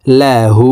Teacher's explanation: এই হা কে ঠোঁট গোল করে উপরের দিকে ধাবিত করে আলিফ টেনে পড়বো